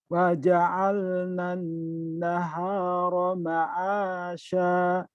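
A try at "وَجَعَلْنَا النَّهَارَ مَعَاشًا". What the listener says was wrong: Ya, shinnya udah keluar tuh. Gitu ya, Masya. Ya, lihat mulut saya ini. Lihat mulut saya. Ma'asya. Ma'asya. Ma'asya.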